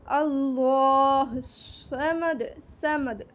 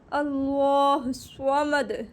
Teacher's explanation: सीन को बारीक, स्वाद को पूरा अदा किया जाता है